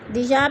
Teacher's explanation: الف خالی سے پہلے یا کے اوپر زبر ہے تو الف مدہ کو ہم نے 1 الف 2 حرکات کے برابر لمبا کر کے پڑھنا ہے